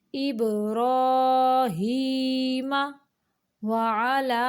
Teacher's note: वाव को अदा करते हुए दोनों होंठों को गोल करेंगे